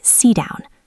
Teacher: Sit has a stopped T because down starts with a D. So it sounds like sit down.